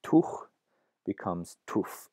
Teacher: that fricative is not dropped completely, but rather changed to a different fricative, to an F sound